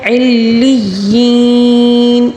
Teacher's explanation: ابراری لفی علیین، علیین دیکھیں 2 تشدید ہے یہاں پہ، دونوں کو مضبوطی کے ساتھ پڑھنا ہوگا، ٹھیک ہے، جمع ٹھہراؤ کے ساتھ تشدید کو پڑھنا ہوگا، لیکن یہاں پر 2 تشدید ہے، علیین، اور یا مدہ بھی ہے، اس کو ہم 3 الف کے برابر کھینچ کر پڑھیں گے